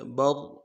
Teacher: را کو موٹا کریں گے، برق، قاف کو موٹا کریں گے، برق، قاف کو کھینچا نہیں ہے، برقو نہیں پڑھنا ہے، برق، ہونوں گول کریں گے، پیش کو ادا کرتے ہوئے، زبر زیر پیش کو بالکل نہیں کھینچیں گے۔